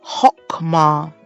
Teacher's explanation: ends with a consonant that is not accented in such cases the quamat takes on the short o sound rather than the longer a sound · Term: Qamats Qatan